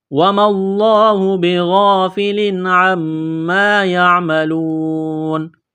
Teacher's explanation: تنوین کے بعد عین ہے، حروف حلقی ہے، غنہ نہیں کریں گے